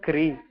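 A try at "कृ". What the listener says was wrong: Oh, it is not kra or kri. It is kr, kr. So it's like a rishi. This sound, the purpose of having different symbols for this pronunciation is because the pronunciation different sounds. They have different sounds.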